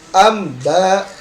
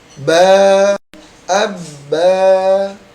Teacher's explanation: Yang benar adalah tanpa melalui hidung, maka akan terdengar jelas.